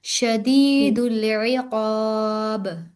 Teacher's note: पीछे काफ है काफ मोटा करेंगे बा पर कलकला करेंगे